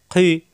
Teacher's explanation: কণ্ঠনালীর শেষ অংশ থেকে উচ্চারণ